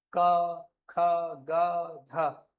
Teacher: ऐसा लगेगा आवाज सीधे गले से आ रही है। · ऐसा लगे आवाज सीधे गले से आ रही है, तो इनको क्या बोलेंगे हम लोग? कंठ व्यंजन कहते हैं।